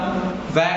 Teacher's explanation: व का उच्चारण स्थान होता है दंत प्लस ओष्ठ।